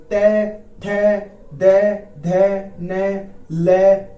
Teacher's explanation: और फिर इसके बाद में दंतव्य, है ना, जो दांत के सपोर्ट से, ते, जब जीभ हमारी दांत पर लगेगी तो वो दंतव्य कहलाएंगे